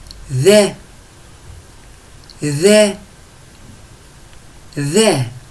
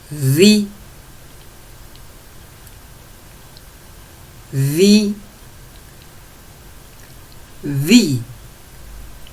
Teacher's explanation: وحرف الذال من الحروف اللثوية. نخرج لساننا قليلا. On sort un peu notre langue pour le prononcer.